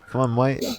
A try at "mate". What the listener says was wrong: You need to extend your A on the mate. No, mate. Go like more of an A. No, you're like miting out. You need to say mate.